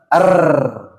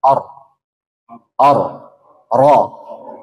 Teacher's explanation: sempurna kurang tepat karena dia terlalu bergetar namanya takalluf ya berlebihan jadi getarkan sekitar dua getaran saja